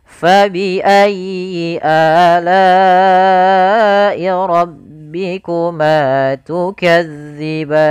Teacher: Pada lafal fa alirkan nafas, ayyi tekan huruf ya-nya, kemudian a mad badal, lai ada bacaan mad wajib muttasil yang dimana kita harus memanjangkan la-nya sepanjang 4 harokat